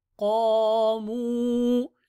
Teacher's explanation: Two elongations, قاف and with the ألف ميم with the واو.